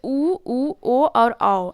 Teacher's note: ऐसे बोलने में क्या होता है, ओठ की आकृति वृत्ताकार हो जाती है, तो ये हो गया वृत्तमुखी स्वर, ठीक है।